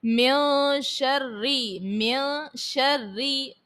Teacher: پھر اس کے بعد ہے من شری، من شری، نون ساکن کے بعد شین ہے حرف اخفا کا، غنہ کریں گے، رو کے نیچے زیر ہے تو رو کو باریک پڑھا جائے گا